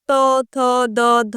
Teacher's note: দেখো এই যে ধ্বনিগুলি উচ্চারণ যদি করো দেখবে যে জীব আমাদের দাঁতকে স্পর্শ করছে। ত থ দ উচ্চারণ করে দেখো দাঁতকে স্পর্শ করছে।